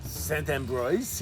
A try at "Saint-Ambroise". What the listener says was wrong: No, not bras. Bois. Bois.